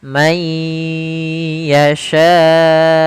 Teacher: Maka cara membacanya masukkan ke huruf ya sambil ditahan gunahnya. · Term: idgham